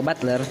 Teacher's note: Butler Venom punya polisi literal karena setelahnya disusul dengan l sehingga tidak perlu dilepaskan closingnya dengan melepaskan ujung lidah tapi cukup dengan menurunkan Sisi lidah saja